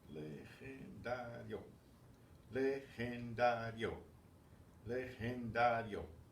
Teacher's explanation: It ends in a vowel, so the stress is going to be on the next to the last syllable, which is dario, legendario, because yo forms a single vowel syllable, like it's a diphthong, yo.